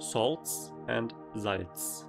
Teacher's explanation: both words include the same final sound, [ts], both in salts and Salz